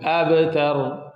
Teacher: Abtar qalqala, light qalqala. Abtar ra, to be read as full and heavy.